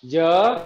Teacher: có chữ hờ cuối từ chúng ta đọc cao và kéo dài